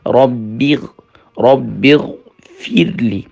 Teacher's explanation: فا کو جب را سے ملائیں گے تو یہاں را فل ماؤتھ نہیں ہونے پائے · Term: را جو ہے باریک ہوگی